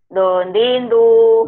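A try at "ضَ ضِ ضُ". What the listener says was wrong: Tapi bulat ya, Bu, ya? D-H-O. Itu ya, bulat. D-H-O.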